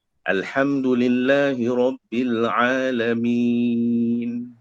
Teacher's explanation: Nun mesti kita angkat lidah kita, dia berhenti kat langit-langit.